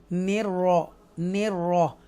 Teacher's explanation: यहाँ पर हमने तरकीक किया, यहाँ पर भी निर्र, ये तरकीक तो नहीं होगा, ये हम उसको बोल्ड ही पढ़ेंगे रॉ को